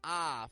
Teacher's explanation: When we get ah, I was discussing in our previous episode that we get the tongue around the center of the mouth. It's not low, it's not high, it's just around the center. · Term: short O sound